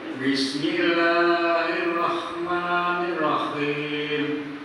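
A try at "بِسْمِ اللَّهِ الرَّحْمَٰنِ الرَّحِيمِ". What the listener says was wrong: nah itu h-nya jadi ko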